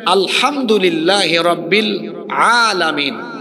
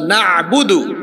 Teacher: এখন আইন উচ্চারণ হয় কোথার থেকে? ওয়াসাতে হাল, গলার মাঝখান থেকে।